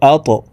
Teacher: ত কলকলার হরফ উপরের দিকে ধাবিত করে ধাক্কা দিয়ে উচ্চারণ করব